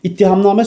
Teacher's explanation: Yəni t-nın ikincisi d ilə əvəz olunacaq.